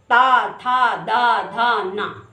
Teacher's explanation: ता जीभ और दांत का